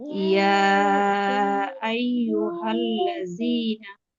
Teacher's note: ইয়াতে তিন আলিফ টেনে পড়তে হবে